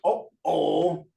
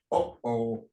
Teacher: your throat is going to close a little bit then it'll open up with your word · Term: glottal stop